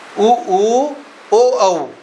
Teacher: होठ गोल हो जाएंगे आपके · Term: गोलाकार स्वर